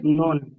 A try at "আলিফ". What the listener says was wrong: না না, নুন হবে না, আলিফের ডান দিকে যাবার আছে, একে আলিফ মাদ্দাহ বলে। হ্যাঁ, একে আলিফ মাদ্দাহ বলে। হ্যাঁ, আলিফ মাদ্দাকে এক আলিফ পরিমাণ টান দিয়ে পড়তে হবে।